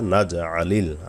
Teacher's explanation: আইন গলা নেবেন, জিম কলকলার অক্ষর